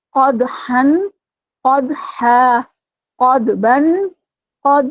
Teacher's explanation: कफ को पुर पढ़ना है और बहुत अच्छे से कफ का मखरज आपने अदा करना है या मोटा पढ़ा जाएगा